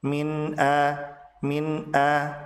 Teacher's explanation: Begitu juga dengan kanu, dua-duanya dibaca panjang 2 harokat disebut sebagai mad tabi'i. Sementara nun dibaca jelas atau idhar halqi karena nun bertemu dengan huruf tenggorokan yaitu hamzah